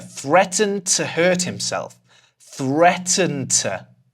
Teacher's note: we're throwing the /d/ away again.